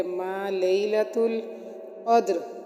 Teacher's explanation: قدر میں قاف موٹا اور دال ساکن کی وجہ سے ہم اس پر قلقلہ کریں گے